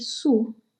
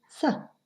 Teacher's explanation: Los labios redondeados al decir su y distendidos al decir sa.